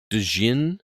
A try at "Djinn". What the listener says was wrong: The D is silent. That's what I just said, the D silent.